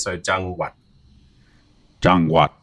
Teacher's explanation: what makes the low tone there is that your throat's locking down on the wat, right? So jang, you want to send your throat down and kill at the end.